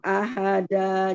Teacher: jangan dimatikan hamzah. Ahada, jadi habis di mulut A-nya.